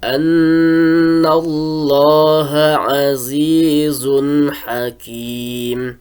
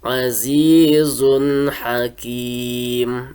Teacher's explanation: Nah, suara tanwinnya bertemu dengan ha itu dijelaskan.